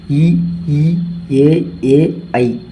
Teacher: அதே மாதிரி முயற்சி பிறப்புல எடுத்துக்கிட்டோம்னா உயிரெழுத்துக்கள் 12ும் அ ஆயை திறந்து ஒளிப்பதனாலும் இ ஈ ஏ ஐ வாயை திறப்பதோடு மேல்வாய் பல்லை வந்து நாவோட விளிம்பு வந்து தொடுவதால் தோன்றும்